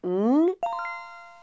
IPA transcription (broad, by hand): ŋ